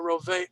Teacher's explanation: Hebrew adds an extra sound there, roveach, to tell you there's a het on the end.